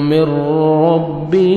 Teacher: ادغام ہوگا بغیر غنہ کے ساتھ. نون ساکن بار حروف یرملون میں سے را ہے تو یہ آپ نے غنہ بغیر غنہ کے ساتھ ادغام کرنا ہے.